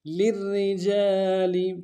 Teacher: للرجال، لام کو را کے سامنے آنا ہے، را کو باریک ادا کریں گے، را کے اوپر تشدید زور دیں گے، جیم کے ساتھ الف مدہ ہے ایک امتداد میں کھینچیں گے۔